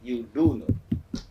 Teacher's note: Then you are putting an emphasis. And while speaking, we stress the word do and does.